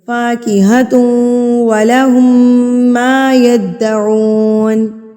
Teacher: ہم نے غنہ کہتے ہیں ناک میں آواز کو لے کر جانا. تو مطلب تنوین کی آواز کو ہم نے ناک میں ایک حرکت کے برابر جو ہے وہ روک کے رکھنا ہے، ناک میں لے کے جانا. تو اور اگر یہاں پر لام اور را ہوتا واو کی جگہ پہ اگر لام یا را ہوتا تو ہم یہاں پر غنہ نہ کرتے فوری سے پڑھ لیتے.